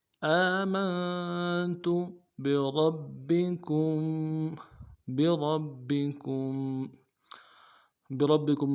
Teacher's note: بکم میں کم میں میم ساکن ہے، غنہ کرنا ہے۔